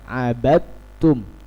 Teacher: Abadtum dibaca langsung kepada huruf ta, karena dal dan ta itu sama-sama di makhraj yang sama atau di tempat keluarnya huruf yang sama. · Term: idgham mutajannisain